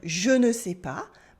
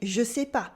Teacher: in spoken French, we almost always drop the ne in negations. Even when talking to a stranger, even when we're being polite.